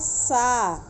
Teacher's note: यह दंत सा है, ये दांत के पास जीवा ले जाके बोलना चाहिए।